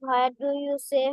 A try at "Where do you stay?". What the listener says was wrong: Not say stay, S-T-A-Y, stay. Where do you stay?